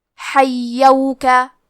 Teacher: کلمت حیوکا میں ہا کی ادائیگی حلق کے درمیان والے حصے سے ہے۔ یا پہ تشدید ہے تو ہمیں 2 حرف کے برابر یا کو پڑھنا ہے، اور کیونکہ تشدید زبر کا ہے تو ہم زبر کو ظاہر کریں گے۔